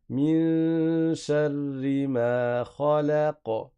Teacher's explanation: Donc ça va donner khalaqa. Tu fais pas une vraie fatha, tu t'arrêtes sur un soukoun, mais tu laisses rebondir le son. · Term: qalqala